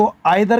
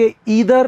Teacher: आप यह मान सकते हैं कि either को ब्रिटिश लोग eye-ther और अमेरिकी लोग ee-ther कहते हैं।